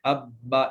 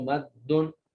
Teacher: تو یہ دو حرف ہوتے ہیں جو پہلا ساکن ہوتا ہے اور دوسرا متحرک ہوتا ہے، دونوں کو ملا کر ایک ہی حرف بنا دیا جاتا ہے، پڑھنے میں وہ ایک ہی آتا ہے، لیکن اس کے اوپر جو دیر لگتی ہے وہ 2 حرفوں کے برابر ہوتی ہے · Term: تشدید